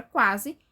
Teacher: A palavra quase é um ditongo crescente.